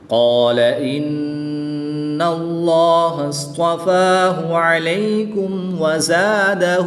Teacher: نون مشدد میں ہمیشہ غنہ ہوتا ہے تو یہاں پر غنہ کر کے پڑھیں گے